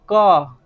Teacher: क जब बोलिएगा तो ऐसे लगेगा कि मतलब लास्ट में क के बाद फिर अ आ रहा है